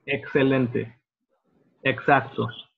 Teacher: Excelente or exacto have an X in the middle, right? And it sounds like a CS sound.